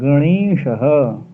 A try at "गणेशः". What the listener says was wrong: गणेशः। गा पे अनुनासिक नहीं, णा पे ही रहेगा। गणेशः।